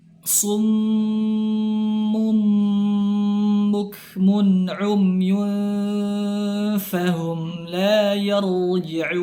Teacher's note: ra sukun sebelumnya berharakat fathah, maka dia dihukumi dengan ra tafkhim, ra dibaca dengan tebal.